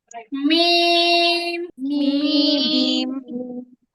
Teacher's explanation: মিম উচ্চারিত হয় দুই ঠোঁটের শুকনো জায়গা থেকে